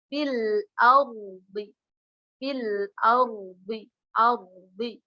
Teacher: Diingat lagi ketika ada ra sukun sebelumnya huruf berharokat fathah maka dia dinamakan ra tafkhimul ra, yaitu ra-nya dibaca tebal. Bagaimana caranya? Diangkat bibirnya.